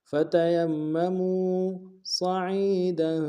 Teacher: صاد کو موٹا ادا کریں گے